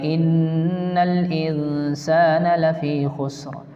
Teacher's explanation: نون پر تشدید ہے، ایک الف کے برابر گننا کر کے پڑھیں گے